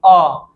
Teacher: जिसके उच्चारण में मुख सबसे ज्यादा खुलता है उसको हम बोलते हैं विवृत स्वर